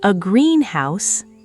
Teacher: stressed heavily on the first word